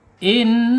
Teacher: nun ini mempunyai sifat ghunah ya, yaitu dengung ketika dia ada tasdidnya